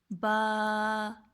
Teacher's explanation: دونوں ہونٹ کو ملا کے جو حرف ادا ہوگا وہ ہے با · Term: مخرج